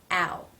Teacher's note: when this sound is in a diff thong that the lips tend round more than they do when the sound is on its own